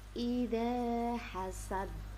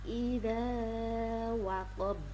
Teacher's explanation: Karena ba termasuk huruf qalqalah yang dibaca sukun karena waqaf. Selanjutnya yang ketiga adalah ikhfa hakiki. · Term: qalqalah kubra